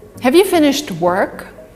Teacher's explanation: the emphasis is on work here and have is weak